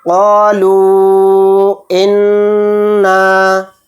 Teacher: نون پر تشدید ہے تو نون میں غنہ کریں گے